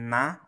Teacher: ujung lidah ketemu gusi atas itu na